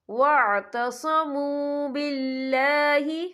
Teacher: تابوا واصلحوا واعتصموا باللہ، واعتصموا، یہاں بھی واو مدہ ہو رہا ہے، واو ساکن ہے، واو ساکن سے پہلے پیش ہے تو ہم یہاں 2 یا 3 حرکت کے برابر کھینچیں گے